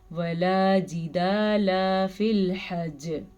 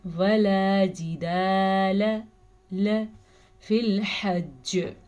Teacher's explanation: آپ نے لام کو لمبا کرنے کی غلطی کر دی، آپ نے لام پہ کھڑی زبر ڈال دی. آپ نے پڑھنا ہے ولا جدال ل فی الحج.